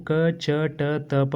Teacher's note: ಕ ಟ ತ ಪಕ್ಷಗಳನ್ನ ನಾವು ಉಚ್ಚಾರಣೆ ಮಾಡಬೇಕಾದರೆ ಕಡಿಮೆ ಸಮಯವನ್ನು ತೆಗೆದುಕೊಂಡಿರ್ತಕ್ಕಂತದ್ದು ಮತ್ತು ಕಡಿಮೆ ಉಸಿರನ್ನ ತೆಗೆದುಕೊಂಡಿರ್ತಕ್ಕಂತದ್ದು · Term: ಅಲ್ಪಪ್ರಾಣಾಕ್ಷರಗಳು